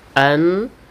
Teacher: an dibaca berdengung karena wajibul ghunah